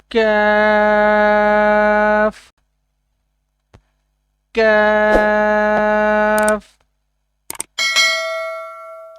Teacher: زبان قاف کے مخرج سے تھوڑا آگے لگے تو کیف ادا ہوتا ہے